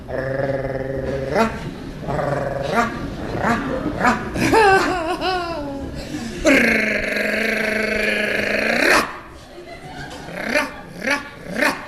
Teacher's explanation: Oh, mon père et ma mère, que je vous veux mal. Et l'air en portant le bout de la langue jusqu'au haut du palais, de sorte qu'étant frôlée par l'air qui sort avec force, elle lui cède et revient toujours au même endroit, faisant une manière de tremblement.